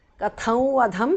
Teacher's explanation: Katham vadham because of sandhi. Anuswara changes to the nasal of va.